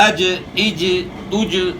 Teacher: जुबान का बीज ऊपर तालू के साथ लग रहा है